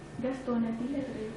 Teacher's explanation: le N, en fait, se déporte sur la syllabe qui suit